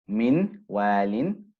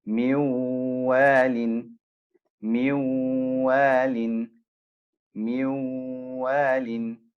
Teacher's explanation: It will be merged. The noon will merge into the wow. Miwalin, miwalin, miwalin.